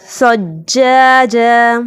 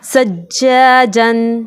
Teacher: वक्फ़ की सूरत में हम सज्जाजा पढ़ेंगे, लेकिन जब वक्फ़ नहीं करना होगा तो हम इसे सज्जाजन